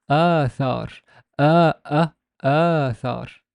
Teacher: There's a glottal stop, which is the hamza